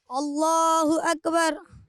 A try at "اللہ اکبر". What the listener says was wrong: کاف پر قلقلہ نہیں ہوگا. اللہ اکبر.